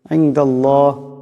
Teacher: এখানে নুন সাকিনের পরে দাল আসছে, দাল ইকফার হরফ, এখানে ইকফার একালে পরিমাণ গুন্না হবে। ইনদাল্লাহ, আল্লাহ লামের ডাইনে জবর আসছে, এই আল্লাহ লামকে মোটা করিয়া পড়তে হবে